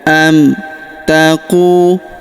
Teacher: Huruf qu kita panjangkan dua harakat karena terdapat wau sukun di depannya.